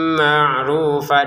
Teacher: karena di depannya ada mim kita masukin tanwinnya ke mim dengan dengungan marrufa dengungannya dua harakat Jangan sampai kurang ya.